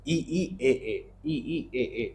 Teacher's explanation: ई ई ए ए ई ई ए ए ये आगे से बोले जाते हैं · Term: अग्र स्वर